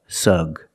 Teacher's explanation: the first syllable is the short uh sound like cup and up